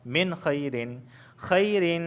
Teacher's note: نون ساکن کے بعد خا آیا ہے اور خا حروف حلقی میں سے ہے تو لہٰذا یہاں پہ غنہ نہیں ہوگا، صرف اظہار ہوگا